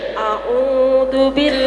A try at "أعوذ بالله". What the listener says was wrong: A'udzu. Bukan du, a'udzu.